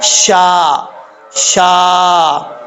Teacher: شین کا مخرج ہے زبان کا درمیان اوپر والے تالو کے درمیان سے لگے گا